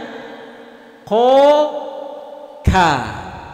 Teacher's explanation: Jadi kaf itu keluar sedikit, maju ke depan. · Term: huruf kaf